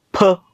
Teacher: नाही म्हणजे थोड्याफार फरकाने आहे जसं मराठीमध्ये फ चा उच्चार उच्चार दोन ओठाने हवा बंद करून प मध्ये ह जोडून त्याचा उच्चार फ असा करतो असा उच्चार इंग्रजीमध्ये नाही तर तो कसा आहे असा आहे इकडे